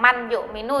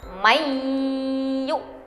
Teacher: cara membacanya dengan masuk ke huruf idgham bigunnah, namun dengan disertai dengung